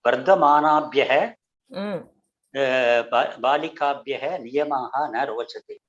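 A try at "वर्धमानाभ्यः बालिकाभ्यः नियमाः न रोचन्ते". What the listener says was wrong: उत्तमं. वर्धमानाभ्यः उत्तमं. बहु सम्यक् महोदय, सम्यक् कृतं.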